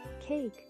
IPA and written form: keɪk (Cake)